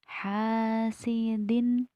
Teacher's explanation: Hasidin da huruf da cara membacanya itu ujung lidah menempel di bagian belakang gigi atas. Ujung lidah menempel di belakang gigi atas, tidak di bagian langit-langit tengah ujung lidahnya